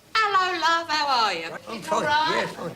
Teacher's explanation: the characteristic of cockney that everybody knows of course is dropping the h